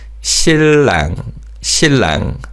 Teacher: 니은 받침 in 신랑 is pronounced as a 리을 sound.